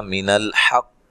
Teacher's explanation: قاف کو موٹا ادا کرنا ہے, ہا کو واضح نکالنا ہے